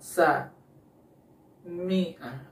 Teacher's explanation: Ketika mengucapkan mimnya, bunyinya tidak sempurna keluar karena hidungnya tertutup.